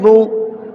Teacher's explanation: پیش کو بھی معروف پڑھا جائے اور مجہول آواز سے بچا جائے، تھوڑا بھی نہ کھینچے.